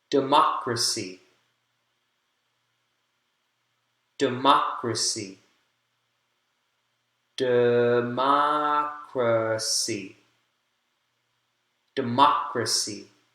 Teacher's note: second syllable has the word syllable stress democracy democracy democracy democracy second syllable has primary stress